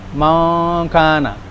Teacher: ketika melafalkan kalimat yang ada hukum ikhfa-nya, itu terdengar seperti NG.